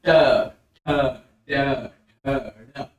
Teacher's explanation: जैसे ट वर्ग में हम बोल रहे हैं ट ठ ड ढ ड र और श, इसके उच्चारण में यानी मूर्धा के उच्चारण में जीभ ऊपर वाले दांत के और तालू के बीच में, यानी ऊपर वाले दांत और तालू के बीच में जीभ को मोड़ कर ले जाएंगे और उसके जीभ के नुकीले भाग से बोलेंगे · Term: मूर्धन्य